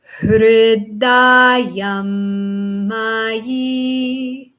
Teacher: So middle, high, low, middle, high.